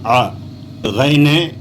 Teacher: அ த்ரோட்ல இருந்து வரணும் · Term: ஐனு